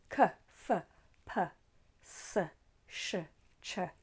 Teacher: Whereas unvoiced consonants, if you put your finger on your throat, you won't feel any vibration. Examples of unvoiced consonants are k, f, p, s, sh, ch.